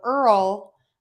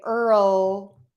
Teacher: just use that light L if you're going for clarity and I actually think it's easier to make the light L after the r because you actually end somewhere so you end by touching your teeth the alveolar Ridge for that l so that's my tip is to just go for that light · Earl I can say with a dark l but then I could say Earl with a light L